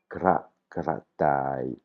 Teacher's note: en thaï, le ro n'existe pas, c'est un r roulé comme je le prononce, mais vous pouvez le prononcer comme un l si vous n'arrivez pas à rouler le r.